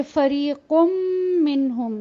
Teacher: نون بالکل غائب ہو گیا اور ہم نے جا کے میم کا غنہ کیا اور مکمل اس کو اس میں اگلے حرف میں مدغم کر دیا گیا.